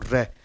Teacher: रे यानी वाइब्रेट होगा, कंपन होगा, इस कारण रे को किस में रखा गया है, प्रकंपित या लुंठित या कंपनजात, ठीक है।